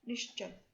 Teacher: इसके उदाहरण देखिए नीहि जमा चल, यहाँ पर आप यह देख रहे होंगे कि ये जो च है ये तालव्य है, इस कारण से ये जो विसर्ग है ये इस श में यानी तालु से उच्चारित होने वाले श में परिवर्तित हो गया और यह शब्द बना निश्चल। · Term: तालव्य श